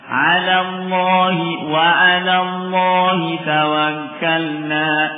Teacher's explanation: lam yang pertama tarfiq tipis, lam yang kedua lafzul jalalah tafkhim dibaca tebal ya. Maka jangan Allah, 'alallahi ya.